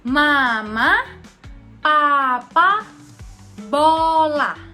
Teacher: Bilabial adalah bibir bawah ketemu bibir atas. Bibir bawah sebagai artikulator aktif dan juga bibir atas sebagai artikulator pasif. Jadi bibir atas dan bibir bawah itu ketemu. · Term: konsonan bilabial